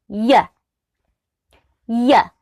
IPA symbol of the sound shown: j